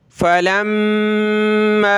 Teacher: लाम को मीम के साथ मिलाकर गुन्ना करेंगे मीम पर